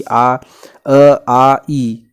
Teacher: निरनुनासिक स्वर जिन स्वरों के उच्चारण में हवा केवल मुंह से निकलती है उसको निरनुनासिक कहते हैं